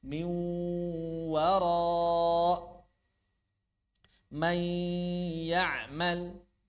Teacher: Jadi mulut itu harus sudah huruf wau, huruf ya. Mulutnya sudah huruf wau, mulutnya sudah huruf ya. Jangan jadi suara sengau semuanya. · Jadi hurufnya sudah au, tapi masih ada suara rongga hidungnya. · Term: idgham bigunah, idgham bi gunnah